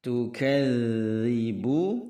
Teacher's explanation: Ketika mentasydidkan huruf dzal, dia tidak mati suaranya melainkan seolah berjalan